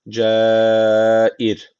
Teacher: Onunla öncesindeki harfin harekesi de altta. Yani ra harfine alttan giriş yapılıyor. Dolayısıyla ra harfi burada ince okunacak.